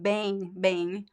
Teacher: You have like the nasal sound, the two vowel sounds, right?